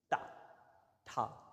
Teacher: दांत के पीछे अंदर ऊपर जाके जीभ टक से करे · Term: टा वर्ग